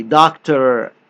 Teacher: The sound of American R is more like a vowel. It's made without the tongue touching anywhere in the mouth.